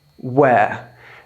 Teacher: British people, we don't really like pronouncing R's unless they're at the beginning of a word.